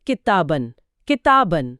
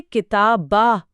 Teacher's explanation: यह नून की आवाज गायब हो जाती है और उसकी जगह आ की लंबी आवाज ले लेती है